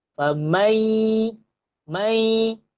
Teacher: Lidah sebut ya, hidung keluarkan bunyi nun. Famai, keluarkan dengung. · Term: idgham ma'al gunnah